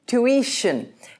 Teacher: Notice the I in the middle of the word, and you need to pronounce that as an E very clearly.